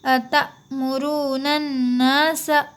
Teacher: यहाँ पे अलिफ़ और लाम को नहीं पढ़ेंगे, नून को नून में मिला देंगे।